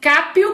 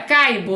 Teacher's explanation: A consoante P é surda, a consoante B é sonora.